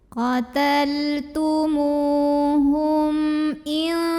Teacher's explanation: Karena mim sukunnya menghadapi huruf selain mim dan ba yaitu huruf hamzah ya. Maka mim sukun ini dibunyikan dengan jelas. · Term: izhar syafawi